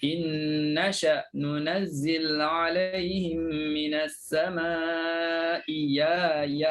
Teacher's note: Jadi yang ni Abu Am dia baca ibdal. Ibdal tu maknanya tukar. Hamzah kedua jadi huruf ya.